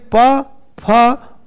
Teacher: 'पा', 'फा' पहले और दूसरे हैं, वे अघोष में जाते हैं।